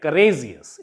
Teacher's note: So the stress will be on the penultimate syllable, means on the second last syllable, or we can say last but one syllable.